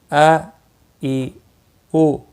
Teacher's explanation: نرمی کے ساتھ سانس کو چھوڑتے ہوئے، یعنی سینے کی طرف سے یہ دونوں ادا ہوتے ہیں۔